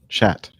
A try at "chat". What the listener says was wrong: Chat. You barely say that T at the end though. Chat.